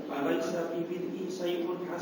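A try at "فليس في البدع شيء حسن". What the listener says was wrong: Bid'ai bukan bid'i. Bid'ah jamak dari bid'ah.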